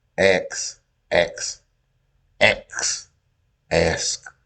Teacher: The common pronunciation of ask as ax is an example of metathesis, in which two speech sounds are allowed in flexible order.